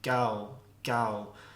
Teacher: you notice there for this one you kind of get this glide gliding y sound as well so basically you get these glides as a natural consequence of